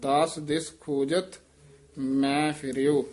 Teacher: ਦਸ ਪਾਠ ਜਿਹੜਾ ਨਾ ਸੁਧ ਹੈ ਦਾਸ ਦਿਸ ਖੋਜਤ ਮੈ ਫਿਰਿਓ ਦਾਸ ਪੋਲਾ ਬੋਲਣਾ ਦਸ ਨਹੀਂ ਕਹਿਣਾ ਹੈ